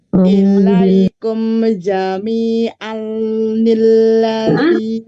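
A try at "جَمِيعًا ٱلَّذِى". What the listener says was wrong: Pendek. Jami'anil. Jami'anil. Pendek. Tidak dipanjangkan, tidak jami'anil, tidak jami'anil karena disambungkan. Anil.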